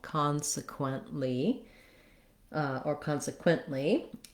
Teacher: So again, we have first syllable stress. Con is long, has the clear vowel. Consequently, or consequently, and we don't really release that T.